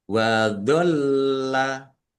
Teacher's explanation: lam tasdid dibaca dobel ditekan dan ditahan ya biar tampak dobelnya